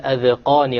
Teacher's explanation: the alif here is going to be light or heavy? Heavy, because it's preceded by a qaf.